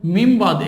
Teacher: নুন সাকিনের পরে বা আসছে, এই নুনটা মিম হয়ে যাবে। এখানে মিন বা দিয়ে আছে, বলতে হবে মিম বাদ।